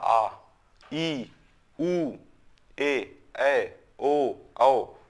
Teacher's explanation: जब हम उच्चारण करते हैं तो इनमें 2 मात्रा का समय लगता है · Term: दीर्घ स्वर